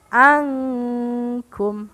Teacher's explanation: membaca dengungnya harus siap-siap ke huruf Kaf bunyinya mirip dengan Eun atau samarnya rendah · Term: ikhfa ab'ad